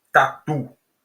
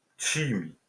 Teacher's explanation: porque não chia não tem chiado nenhum é duro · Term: t duro